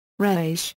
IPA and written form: ɾha.ˈeʃ (rhaesh)